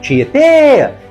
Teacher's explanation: Tietê tem 3 sílabas e a mais forte é a última. Tietê. Então, ela é oxítona terminada em e e, por isso, acentuada.